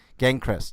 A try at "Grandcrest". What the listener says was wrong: You said Gangcrest, it's Grandcrest.